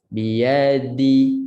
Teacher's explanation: Dal makhrajnya hujung lidah serta belakang pangkal gigi atas.